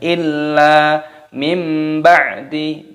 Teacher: nun sukun bertemu dengan ba, hukumnya dibaca iklab. Cara membacanya yaitu dengan cara mengganti menjadi huruf mim